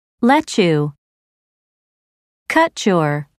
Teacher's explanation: the combination of the two sounds changes to a CH sound